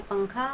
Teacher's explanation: तो नून की आवाज को हमको नाक में छुपाकर पढ़ना है। जैसे हम उर्दू में पंखा वर्ड यूज़ करते हैं।